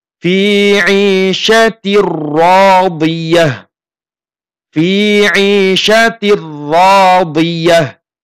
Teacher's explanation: Di sini bertemu dengan huruf ro, membacanya idgham bila gunnah, tidak didengungkan. · Fi 'isyatir radiyah, ya. Tidak membaca dengung, membacanya jelas, ya, tasdid biasa.